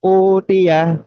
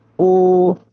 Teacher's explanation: Sini ada alif atau hamzah domah bertemu dengan huruf wau sukun. Nah, dibacanya memang dua harakat ya.